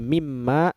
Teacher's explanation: yaitu apabila pengaruhnya menyeluruh seperti pada Min ditambah maag menjadi mimma dimana konsonan n melebur menjadi m dalam bahasa Arab asimilasi ini disebut dengan Idgham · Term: asimilasi komplit